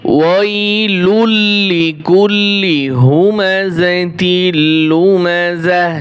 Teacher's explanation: যখন ওয়াকফ করব তখন তি আর হবে না, এই তা গোলতা হা উচ্চারণ হবে।